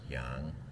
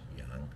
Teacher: it's actually pronounced yang, pronounced upwards, yang, second tone